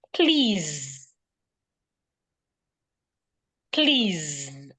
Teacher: The S here sounds like a zed.